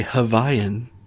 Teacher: W's are pronounced as V's, just like in German